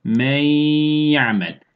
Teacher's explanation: Hem birbirine katıyoruz hem de gunne sesi hayşumdan getiriyoruz